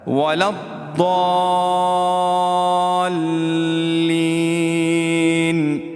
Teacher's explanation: ولا الضالین میں بڑی مد ہے, اس کو 5 الف کی مقدار ہم اس کو کھینچیں گے